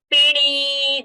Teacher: So p was fast and ni was so pini we cannot do, or pini we cannot do. Pini, that p is short and ni we are holding longer to show the difference